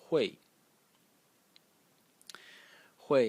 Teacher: This character is pronounced Hui. Hui in the fourth tone